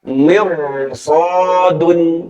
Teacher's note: Tapi karena bertemu huruf isti'la, maka dibacanya tebal huruf ro sukunnya.